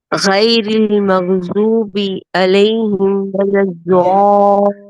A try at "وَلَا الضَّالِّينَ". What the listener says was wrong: ہاں اس کو ذات کو کھینچ کر دیر تک، ولا الضالین، دیر تک ذا کو دیر تک، ضالین، دیکھیے آپ بھی اور آپ سے پہلے جنہوں نے پڑھا تھا دونوں کی سیم غلطی ہے، تو میرا ہاتھ دکھ رہا ہے، آپ نے پڑھنا شروع کیا ہے، ولا الضالین، اس طرح